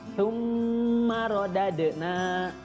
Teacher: Di situ ada mim tasydid, hukumnya adalah gunnah. Jadi harus dengung dulu